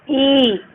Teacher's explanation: अब हम लोग बड़ी ई का उच्चारण कर रहे हैं तो ऐसे बोलते ई, तो इसमें भी 2 गुना समय लग रहा है। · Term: दीर्घ स्वर